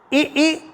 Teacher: इ ई दोनों का उच्चारण स्थान तालू है